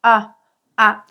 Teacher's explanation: tu vas prononcer le A, mais un peu moins ouvert